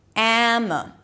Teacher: The next syllable is M. So close your lips and then release it to a very neutral vowel sound, the schwa. Am. So these two vowels are not pronounced the same way.